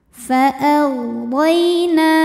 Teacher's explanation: Na dihukumi dengan mad tabi'i zahiri sebab ada alif yang sebelumnya berbaris fathah, maka huruf nun kita panjangkan 2 harokat.